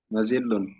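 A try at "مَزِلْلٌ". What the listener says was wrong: Mazil lun. jeda dulu supaya terasa lam sukunnya yang pertama. Mazil lun. Ya, sudah memenuhi syarat idgham, maka diidghamkan lamnya.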